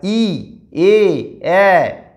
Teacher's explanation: তাহলে অ ও উ, অ উ ও এগুলো হচ্ছে কুঞ্চিত স্বরধ্বনি, কারণ ঠোঁটটা কুঞ্চিত হচ্ছে। আর ই এ ঠোঁটটা প্রসারিত হচ্ছে, তাই প্রসারিত স্বরধ্বনি